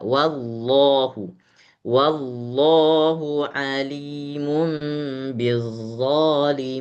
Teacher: lafaz jalalahnya ditebalkan lagi